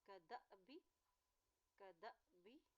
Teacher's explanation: यहाँ देखिए हमज़ा के ऊपर जज़म है, हमज़ा साकिन है, जब भी हमज़ा के ऊपर हमज़ा साकिन होती है, हमज़ा के ऊपर जज़म आती है तो वहाँ पे झटका दे के अदा किया जाता है